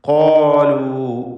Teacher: ഖാഫും ദീർഘാക്ഷരമായ അലിഫും തഫ്ഖീം ചെയ്യുക